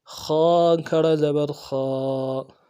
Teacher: خ کھڑا زبر خا، خا کو موٹا پڑھیں گے، یہ بھی حروف حلقی میں سے گلے کے اندر سے پڑھیں گے، موٹا پڑھا جائے گا، اور اس کو پڑھتے ہوئے ہونٹوں کو گول نہیں کریں گے، کھڑا زبر کو پڑھتے ہوئے ایک الف کی مقدار میں کھینچیں گے۔